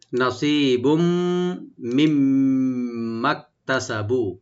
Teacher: তানবিনের উপরে যদি মিম আসছে আমরা ইদগাম উইথ গুন্না করব